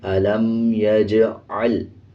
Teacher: عین کی آواز کو واضح پڑھنا ہے، عین کو لام کے ساتھ ملا کے پڑھیں گے